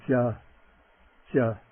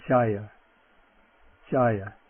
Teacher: Okay, the J, the palatal voiced J, non-aspirate